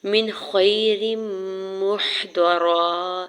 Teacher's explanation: نون ساکن کے ساتھ ملاتے ہوئے اظہار حلقی ہوگا یعنی غنہ یا اخفا نہیں کریں گے